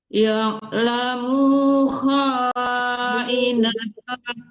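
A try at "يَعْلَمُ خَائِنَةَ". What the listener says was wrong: Munya tidak panjang. Ya'lamu kha'inatan.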